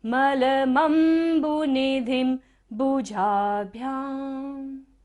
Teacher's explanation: ध के ऊपर बिंदु है और बाद में क्या है, भ, तो यहाँ पर हम बिंदी का उच्चारण म करेंगे